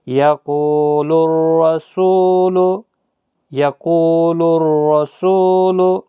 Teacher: الف اور لام نہیں پڑھا جا رہا ہے کیونکہ اس کے آگے حروف شمسی کا را ہے، اس لیے نہیں پڑھا جا رہا ہے۔ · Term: ادغام شمسی